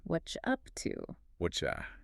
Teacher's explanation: What plus R plus U blends together to become whatcha. That is a massive compression. 3 words into 2 syllables.